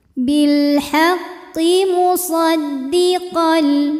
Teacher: Bil haqqi musaddiqal, lalu ada hukum idgham bila gunnah karena tanwin fathah menghadapi huruf lam, maka bunyi tanwinnya masuk ke lam lebur, tidak disertai dengungan, jadi cukup ditekan qal.